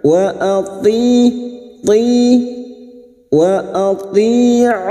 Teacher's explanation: lam jalalah yang didahului dhammah kita baca tafkim atau tebal